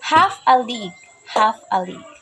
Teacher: the first syllable is stressed and the two consecutive are unstressed. So it is dactyl.